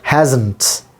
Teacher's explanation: This is primary stress or main stress on ha sound. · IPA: /ˈhæznt/